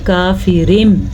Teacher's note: یہاں پہ تنوین کے بجائے میم پڑھا جائے گا،